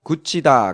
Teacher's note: 굳히다 같은 경우에는 디귿과 히읗이 만나서 축약이 이루어지면서 티읒이 됐어요. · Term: 구개음화